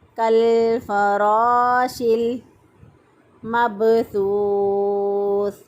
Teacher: ایک الف کے برابر لمبا بھی کیا اور را کو موٹا بھی پڑھیں گے، پور پڑھیں گے، کالفراش المبثوث۔